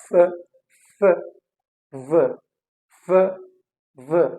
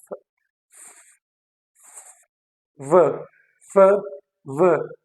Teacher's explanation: lower lip is in contact with my upper teeth